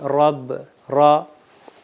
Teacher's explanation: زبان اوپر کی طرف رکھتی ہے را، اور ایک یہ فاصلہ ہوتا ہے اور اس کے اندر تھوڑی سی وائبریشن بھی محسوس ہوتی ہے۔ جب ہم پڑھیں گے را تو ہمیں ایک وائبریشن سی محسوس ہوگی۔